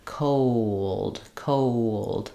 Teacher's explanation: vowel linking where for a rounded vowel the W sound is going to happen cold cold so as I'm sliding my rounded lips o unround · So you're going to hear it like co, and then before the dark L, a little bit of a schwa or an like ol, co, ol, d. And as I move from that rounded O to the unrounded schwa or before the L, I naturally have what's called vowel to vowel linking, where for a rounded vowel, the W sound is going to happen. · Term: W Glide